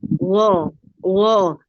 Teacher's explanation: sebenarnya memang seperti Huruf g bu tapi g-nya lemah jadi apa ya antara g gitu gho gho tapi bukan gho